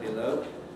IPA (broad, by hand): bɪˈləʊ